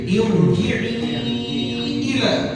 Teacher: Kalimat irji'i ra itu dibaca tafkhim, dibaca tebal.